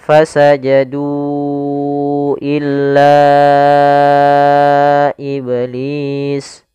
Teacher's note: Tidak boleh dikurangi kadarnya harus empat harakat. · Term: mad jaiz munfasil